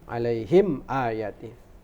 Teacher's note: Maka mim mati bertemu dengan hamzah itu dibaca alaihim ayati, baca izhar syafawi